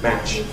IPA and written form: mæʧ (match)